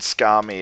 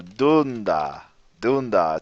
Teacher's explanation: basically it's the second to last syllable that's stressed